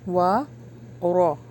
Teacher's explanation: را کو ہیوی پڑھنا ہے، وا پر ہونٹوں کو گول کرنا ہے